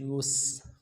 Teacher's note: یا سین پیش یس، سیٹی والا حرف ہے سین، باریک ہوگی سیٹی